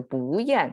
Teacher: the pitch goes up and then down